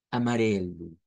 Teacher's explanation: es una R suave la que se utiliza en esa sílaba tónica